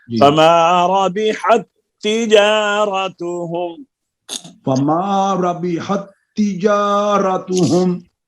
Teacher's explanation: یہ تا کا تا میں ادغام ہوا ہے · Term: ادغام مثلین تام